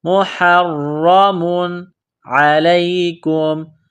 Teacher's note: را کے اوپر تشدید ہے، را کو موٹا کرنا ہے، را میں سختی کرنی ہے۔ مُحَرَّمٌ عَلَيْكُمْ، تنوین کے بعد حروف حلقی ہے، عین ہے تو یہاں تنوین پر غنہ نہیں کریں گے۔